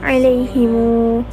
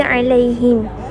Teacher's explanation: Ibn Kathir membaca dengan silah, iaitu menyambung huruf mim dengan huruf waw